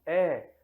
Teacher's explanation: Quando pronunciamos E, a língua sobe um pouco e é jogada um pouco para frente